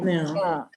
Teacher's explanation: place a tongue where you would place it to say ka, but instead of saying ka, just make a nasal sound